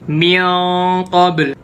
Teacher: Qaf itu di aqsal lisan. Berarti dengungannya juga di aqsal lisan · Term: ikhfa hakiki